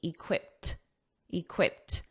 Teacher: notice that pronunciation that e d is a soft T